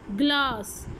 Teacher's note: Hard palate के पीछे आपकी सॉफ्ट पैलेट पर जाके back of the tongue contact करेगी तो आपकी व्हीलर साउंड प्रोड्यूस करते हैं.